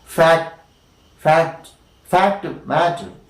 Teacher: So it happens that the third stage is missing, and such kind of a Plosion is known as incomplete Plosion